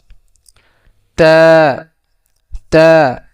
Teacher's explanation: জিহ্বার আগা সামনে উপরে দুই দাঁতের গোড়ার সঙ্গে লাগাইয়া তা তা উচ্চারণ হয়।